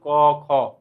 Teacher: কণ্ঠতে আওয়াজটা বাধাপ্রাপ্ত হচ্ছে